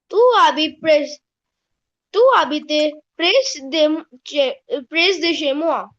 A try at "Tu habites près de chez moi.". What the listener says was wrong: Tu habites près de chez moi. No S. We don't pronounce the S. Tu habites près de chez moi.